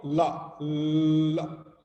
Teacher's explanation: this la sound, actually the tongue is near to the upper lip, upper palate part, but it is not touching it. It slightly has a distance. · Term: approximant